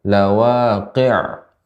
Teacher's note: Ainnya yang lebih sedikit mengalir.